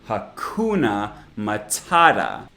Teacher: syllable in each word is the stressed part hakuna matata and all of the vowels in unstressed syllables are actually schwas